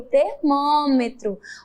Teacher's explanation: Observe que ele termina com a vogal O e tem o som de U, igualmente como o cavalo, que nós acabamos de ver. Termina com O, mas a pronúncia, a oralidade, o som é U no final.